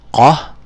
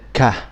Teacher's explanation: Qa from the very back of your throat, and then the ka, just like a letter K.